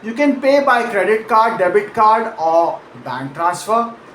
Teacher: American English typically uses a rising pitch on every item except the very last one which falls · credit card rises a bit, debit card rises a bit, and then bank transfer falls at the very end, signaling to the listener purely through melody that the list is now complete.